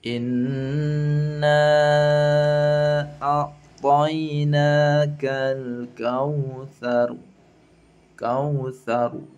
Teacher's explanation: maka ra-nya dibaca tafkhim tebal.